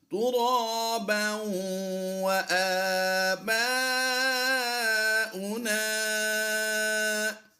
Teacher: با واو دو زبر باؤں کی آواز دیں گے، ہونٹوں کو گول کر کے پڑھیں گے